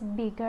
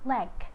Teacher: G is voiced velar stop, for the initial is gain, for the medial is bigger, and the final is leg.